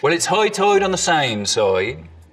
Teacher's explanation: islanders are sometimes called high tiders because of that particularly distinctive eye sound